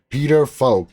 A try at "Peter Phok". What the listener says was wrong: It's Poke actually. It's a silent H.